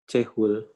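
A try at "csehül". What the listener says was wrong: Enggak, yang titik 2. Karena hurufnya magas.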